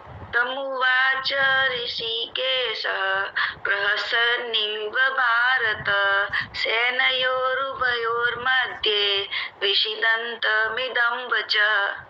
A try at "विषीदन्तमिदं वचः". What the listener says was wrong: देखिए, विषीदन्तमिदं वचः है, इसमें शी पर लंबी मात्रा है, बड़ी मात्रा है, इसलिए विषीदन्तमिदं वचः।